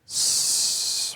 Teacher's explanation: And the second thing is that the air actually passes through our mouth when we make this sound and not our nose